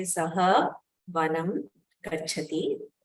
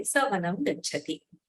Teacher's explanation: So the Visarga has elided. The Makara has also become an Anuswara. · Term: Sandhi